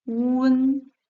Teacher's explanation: Attention, la prononciation de wen se fonde sur ou et n. Quand nous prononçons rapidement en glissant du ou vers le n, la voyelle du milieu e s'entend à peine.